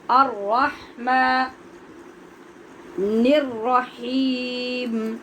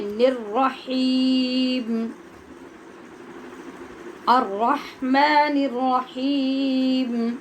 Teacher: ہا نرمی لطافت سے، اور را کو پر